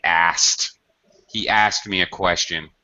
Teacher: it's very common to reduce okay instead of the SKT three you've got three consonants in a row SKT it's very normal to drop that middle consonant